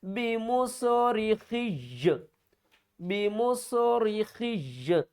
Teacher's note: وقت کی صورت میں ہم کیا کریں گے، یا کو ساکن کریں گے لیکن یا کے اوپر سختی بھی ہم کریں گے